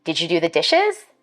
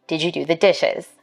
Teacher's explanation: for white speakers we expect a rising tone in questions like these